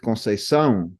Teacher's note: It's a nasal sound because you say it through your nose in the end.